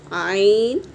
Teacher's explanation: आइन हलक से अदा होगा